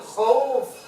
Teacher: ketika mengucapkan huruf waw mati sebelumnya berbaris fathah ini itu kita mesti mengucapnya dengan lunak. Tak boleh ditekan. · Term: layyin